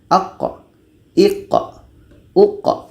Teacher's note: Ada pantulan bukan berangin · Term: qalqalah